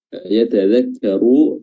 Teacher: ra di sini kita baca tafkhim karena kita baca tebal, tafkhim tebal karena dia berharokat dhammah